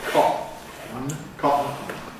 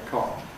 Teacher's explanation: there’s no ‘nasal release’, because the air is held behind the glottal block for you to adjust the soft palate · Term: glottal stop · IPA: [ˈkɒʔn̩]